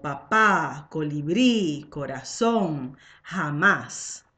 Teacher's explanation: les mots agudas et qui sont les mots dont la syllabe tonique est la dernière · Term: las palabras agudas